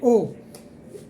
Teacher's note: तो यहाँ से ओ बनेगा, ना आ बनेगा न ए, ओ वर्ण बनेगा, क्योंकि कंठ और ओष्ठ दोनों का उच्चारण स्थान रखता है। यानी आ और ऊ मिलके एक हो करके अपनी जगह छोड़ेंगे तो चाबी किसको देंगे? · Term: कंठोष्ठ वर्ण